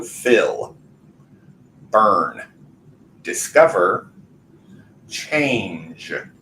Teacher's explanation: whenever we take the base verb without the ending we feel the vibration there on the very last sound of those verbs